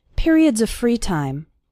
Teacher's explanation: the word of runs in to the word free